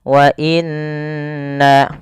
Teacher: ini ada yang nun berharokat tasydid, harus ditahan suara nunnya. Wa inna, karena dia hukumnya ada bacaan gunnah.